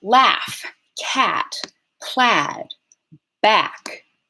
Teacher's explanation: So this ash vowel, this symbol, this IPA symbol, represents a low front, unrounded vowel. So low is the positioning of your tongue, front is the frontness or backness of your tongue, and rounding is whether or not you're rounding your lips.